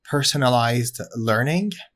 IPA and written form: ˈpɜrsənəlaɪzd ˈlɜrnɪŋ (personalized learning)